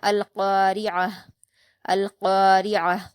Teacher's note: القارعۃ، اب اس کو وقف کرتے ہوئے گول تا کو ہا ساکن میں بدل دیں گے تو یہ پڑھا جائے گا القارعہ، القارعہ۔